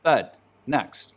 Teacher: trap moving up higher pushes the dress belt back in the mouth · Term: northern cities shift